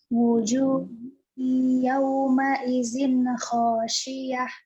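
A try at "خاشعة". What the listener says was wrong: Hati-hati A-nya ya. Tadi khasyiyah, jangan khasyi'ah. Tekan ya di ainnya.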